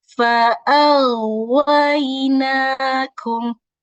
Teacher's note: Fa'awainakum. Jadi huruf suara dari huruf ghainnya itu masih terdengar sampai kita menyebutkan huruf waw. Tidak boleh berhenti menjadi fa'awainakum, tidak boleh seperti itu.